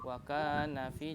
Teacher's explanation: wakanafi ya, tadi nanya dipanjangkan ya, harusnya jangan panjang. Wakanafi, jangan wakanafi gitu ya.